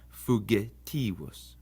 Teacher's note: It's always hard like the G in gain. It's never going to be soft like in gem.